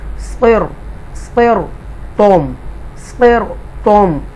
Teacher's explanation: تو اس میں سے یہ صاد جو ہے یہ حروف مستعالی میں سے ہے، پورا پڑھا جائے گا. تو را ساکنہ ہے تو لہذا اس لیے را کو ترقیق کی بجائے ہم تفخیم کے ساتھ پڑھیں گے